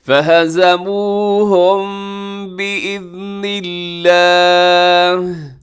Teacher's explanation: میم ساکن کے بعد با ہے، بِإِذْنِ اللہ کے شروع میں با ہے، یہاں پہ ہم اخفاء شفوی کریں گے